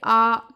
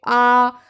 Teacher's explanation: चाहे आप आ पढ़ो चाहे आप बड़ा आ पढ़ो, यानी आप पढ़ेंगे आ, तो आपने देखा कि जो आपका गला है यानी कंठ है वहाँ पर आपको ज़्यादा फोर्स लगाना पड़ रहा होगा बोलने में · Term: कंठ से बोले जाने वाले स्वर